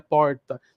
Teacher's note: Triângulo Mineiro e sul de Minas também tem o R retroflexo